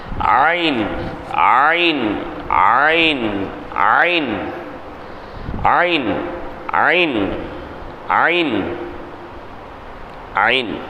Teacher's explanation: ஐன் எப்படி வரணும்? தொண்டையின் நடுப்பாகத்திலிருந்து உச்சரிப்பது. தொண்டையினுடைய நடுப்பாகத்தில் காற்றை வெளிப்படுத்தினா ஷா, தொண்டையினுடைய நடுப்பாகத்தை கொஞ்சம் அழுத்தினா ஐன்.